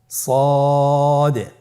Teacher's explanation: জিহ্বার আগা সামনের নিচের দুই দাঁতের পেট ও আগার সঙ্গে লাগিয়ে উচ্চারিত হয়